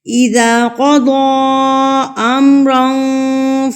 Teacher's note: مد منفصل، جس کو ہم 3 یا 5 حرکات کے برابر کھینچتے ہیں